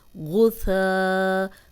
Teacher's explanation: غین موٹا ہے، سا نرم ہے، غین کو موٹا پڑھیں گے، سا کو سیٹی کی آواز نہیں آئے گی. غین پیش غو، سا زبر الف سا، غو سا.